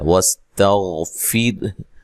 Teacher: واستغفر، ٹھیک ہے، سین کو باریک سیٹی سے ادا کرنا ہے، تا کو باریک پڑھنا ہے، غین کو موٹا ادا کرنا ہے، ٹھیک ہے، لیکن ہلانا نہیں ہے، یہ موٹا حرف ہے۔ یہاں را کو باریک پڑھنا ہے، تو وقف کی صورت میں ہا کو بھی ساکن کرنا ہے